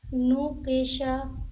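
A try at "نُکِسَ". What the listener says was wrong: نو کی سا. دیکھیے نو کی سا، شا پڑھا آپ نے یہاں پہ، نو کی سا. نو کی سا، نو کی سا. نہیں، نو کی، کاف ہے، کا کی آواز، نو کی.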